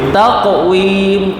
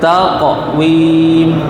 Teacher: qaf dia pun ada qalqalah sughra, kecil. Ada bunyi juga.